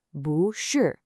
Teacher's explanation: When bu, which is normally a fourth tone, comes right before another fourth tone syllable, it actually changes its own tone. It becomes a second tone, a rising tone. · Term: tone sandhi